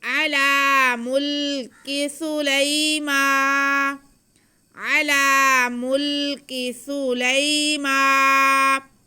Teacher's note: آگے میم پہ کھڑا زبر ہے اس لیے ہم میم کی آواز کو کھینچیں گے ایک الف کے برابر. · یا سے پہلے ہمارے پاس لام پہ زبر ہے تو یہ یا لین ہو گیا، اس کو بالکل نہیں کھینچنا